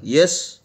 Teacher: An example of the sounds produced at the hard palate is the initial sound in the English word yes